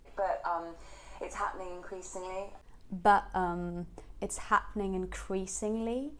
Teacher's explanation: But it's happening increasingly. So ha and crease are stressed syllables, and then you go up on increasingly